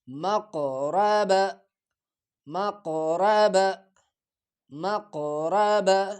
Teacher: موٹا کاف، اس کو ادا کرتے وقت تھوڑا پور کر کے پڑھا جائے گا